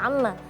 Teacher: Karena mim kan memang tasydid yang seharusnya keluar dari hidung